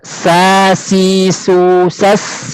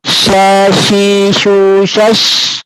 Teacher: Sin lebih tipis daripada shin.